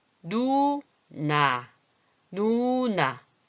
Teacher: 이 혀가 쭉 가서 이렇게 잇몸에 가서 붙으나요? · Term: 니은